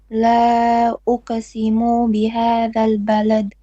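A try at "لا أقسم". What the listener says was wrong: You're still stretching the mu. Say uqsimu and stop the mu. Uqsimu. Uq. Uq.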